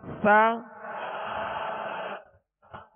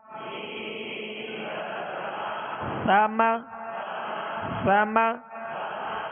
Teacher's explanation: اور مخارج کی لسٹ میں جب سا یا مخرج آپ دیکھیں گے تو اس کی ادائیگی جو ہے زبان کا سرا اور اوپر کے جو سامنے والے دو دانت ہیں اس کے اندرونی کنارے سے لگے تو سا ادا ہوتا ہے